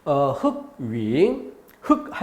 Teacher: 흑 했을 때 이미 리을은 없어지고 기역만 대표음이 됩니다. 대표음으로 기역만 남았다가 그 기역이 넘어갔으니까 받침에 소리 날 게 없죠.